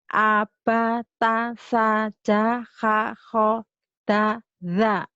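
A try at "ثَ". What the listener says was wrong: Yang belum bagus sa sama za ini. Padahal ini dua hurufnya sama nih ya. sa. Jadi cara ngucapinnya sama. Ini lebih cadel, ini lebih apa? Ini sa za tuh. Sa za sama bentuk sa za Abatasa jahakho da za. Abatasa jahakho da za.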